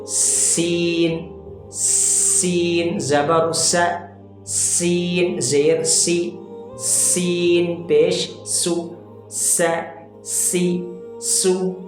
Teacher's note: یہ سین بھی مرقق ہے, جسے باریک پڑھا جاتا ہے